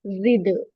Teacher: यहाँ दाल पर कलकला bouncing sound आएगा, एक्स्ट्रा साउंड